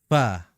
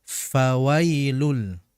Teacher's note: di mana dalam pengucapan huruf fa adalah dengan menempelkan punggung bibir bawah atau bibir bawah bagian dalam dengan ujung gigi seri atas